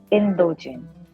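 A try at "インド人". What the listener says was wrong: Very good. Good.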